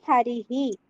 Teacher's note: హరికి తర్వాత ఉన్న విసర్గని హరిహి అని చదువుతున్నాము